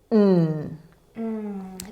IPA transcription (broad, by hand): n